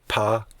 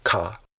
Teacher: when you say pa, your lips press together, and that doesn't happen when you say ka.